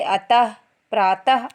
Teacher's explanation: विसर्ग का उच्चारण आधे हा के समान होता है